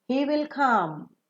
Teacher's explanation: when you say come you fall down because the sentence comes to an end